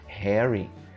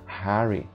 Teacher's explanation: é um A com um toquezinho de um E no meio